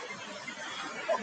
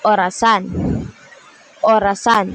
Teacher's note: kapag sinasabi natin ang o nakaangat ng kaunti ang dila sa likod tapos medyo bilog din ang labi pero hindi kasing higpit ng U